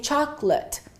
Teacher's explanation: We reduce it to 2 syllables and we say chocolate. The late becomes lut and the O completely disappears. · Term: disappearing syllables